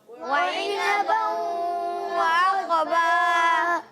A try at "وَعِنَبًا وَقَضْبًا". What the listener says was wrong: وعنبا وقضبا جی انس کی آواز آ رہی ہے، وعقبا نہیں، وقضبا، قاف کی آواز ضاد کی آواز، قاف کو ضاد سے ملائیں گے، وقضبا۔